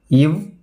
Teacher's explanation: மேல்வாய் பல்லை கீழ் உதடு பொருந்துவதால் பிறக்கும் மெய்யெழுத்துக்கள்